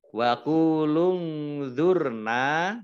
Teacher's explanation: nun sukun bertemu dengan huruf dha, bacaan ikhfa, dibaca samar-samar